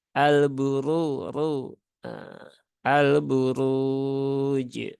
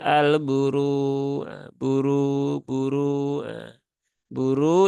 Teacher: yang terlalu banyak kemudian ee rnya berbaris domah di sini ee maka rnya dibaca dengan ee tebal dengan tafhim